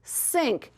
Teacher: that's the I sound, but when we put the NK at the end, it changes a little to the E